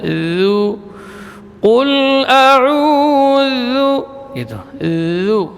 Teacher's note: Ujung lidah di ujung gigi seri atas. Zu tidak boleh tebal. Jadi tidak terangkat kecuali hanya ujung lidah.